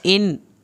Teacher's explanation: ان یہ نون ظاہر ہوگا کیونکہ اگلا لفظ الف سے شروع ہو رہا ہے